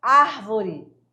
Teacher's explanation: a prosódia ela é responsável por definir que a sílaba tônica, por exemplo, árvore, é na primeira sílaba e não na segunda sílaba. Senão ficaria arvore, tá?